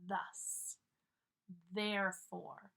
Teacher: my tongue is between my teeth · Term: th sounds